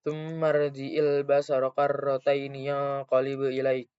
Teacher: nun sukun yang bertemu dengan salah satu huruf ikhfa yaitu qaf dan cara bacanya dibaca dengung dan samar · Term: ikhfa hakiki